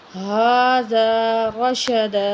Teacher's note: ہا کے اوپر کھڑی زبر ایک الف کے برابر کھینچیں گے